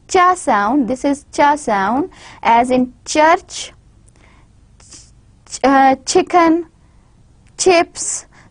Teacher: This is a cha sound, and it is an affricate voiceless, whereas we have ja sound, which is a voiced affricate.